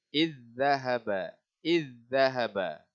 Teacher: Okey, contoh yang terakhir untuk idgham mutamathilain. Zal sakinah bertemu dengan zal berbaris. Jadi baca dia kena idgham